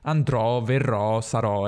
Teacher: alla fine di una parola la o accentata è sempre aperta, mai chiusa